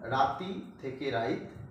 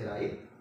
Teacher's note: রাতি শব্দের ক্ষেত্রে কি হয়েছে, তয়ের সঙ্গে যে হর্ষই ধ্বনি ছিল সেটা আগে এসে উচ্চারিত হয়েছে, ফলে হয়ে গেছে রাইত। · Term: অপিনিহিতি